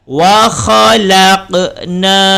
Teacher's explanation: ada huruf qaf dan qaf itu mati berada di tengah disebut dengan qalqalah sughra. Jadi harus dilantunkan.